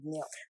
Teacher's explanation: आणि ज अधिक य चा ज्ञ होतो. पण ज्ञ म्हणताना थोडासा द चा उच्चार होतो